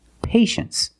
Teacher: Well, you see T-I-E in the second syllable. You know the T is pronounced sh